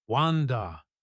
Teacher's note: But in the past tense, wanted to becomes wand. The t sounds become d sounds.